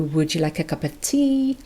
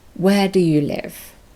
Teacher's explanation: yes no questions go up at the end and wh questions go down at the end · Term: pitch movement